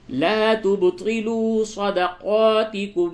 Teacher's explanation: با میں قلقلہ ہوگا، طا کو پر کر کے پڑھیں